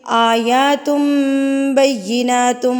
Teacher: یہ بھی نون ساکن اور تنوین کا قاعدہ ہے اقلاب، یعنی کہ تنوین یا نون ساکن کے بعد اگر حروف اقلاب یعنی کہ با آ جائے تو تنوین اور نون ساکن کی جو ساؤنڈ ہے، جو اس کی آواز ہے، وہ میم سے تبدیل کر دی جاتی ہے